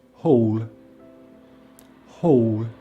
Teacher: it's the the lips around the mouth is open halfway and the tongue at the back of the mouth is slightly raised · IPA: /ɔː/